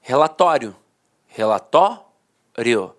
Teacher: a penúltima sílaba a sílaba mais forte e a última de fato perdi a força Então os dicionários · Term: paroxítona terminada em ditongo